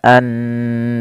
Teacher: ketika ro didahului sebelumnya fathah, maka dibaca tebal ro-nya. Tidak dibaca an-nar tapi tebal.